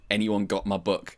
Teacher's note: a third Japanese actor pipes in with just like full glottal stop